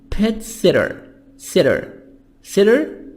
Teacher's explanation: T soft D between two vowels